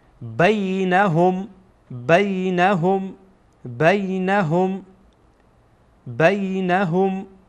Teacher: این را بینندگانی که در درسه های گذشته با تجوید با ما بودن انشاءالله که به ذهنشان هست که ها در واقع حرفیه که از وسط حلق ادا میشه